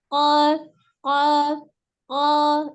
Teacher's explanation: nafasnya tertahan, tidak ada aliran nafas ketika mengucapkan huruf qaf. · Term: al-jahru